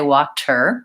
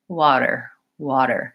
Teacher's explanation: we use what's called the flap T which sounds a little bit more like a D